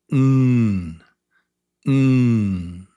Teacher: The sound is N. Your tongue goes up behind your teeth on the roof of your mouth and the sound comes through your nose. It comes through your nose.